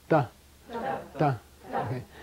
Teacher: it's behind your teeth just behind your teeth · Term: dental